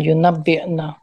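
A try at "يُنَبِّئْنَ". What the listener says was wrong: आप साकिन नहीं कर रही ना। यूनब्बे हाँ, यूनब्बे सही है, यूनब्बे ना।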